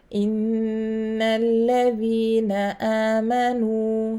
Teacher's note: غنة أكمل, the highest level of غنة. I have to stay longer.